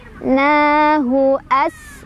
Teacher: Sinnya dia punya sifat hames ya. Jadi ada angin keluar dan punya sifat sofir, ada desisan as kayak suara ular.